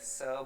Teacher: જો આપણને ખ્યાલ હોય કે ચ બોલતી વખતે જીભને તાળવે લઈ જવાની છે એટલે ઉચ્ચારણ થશે, અને એ જ રીતે આપણે જ્યારે સ છે તો આપણે ખ્યાલ આવી જશે કે એ દંત્ય વ્યંજન છે પણ એ સંઘર્ષી વ્યંજન છે